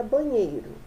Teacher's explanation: A gente percebe que a sílaba nhei, né, é a sílaba de maior intensidade fonética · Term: sílaba tônica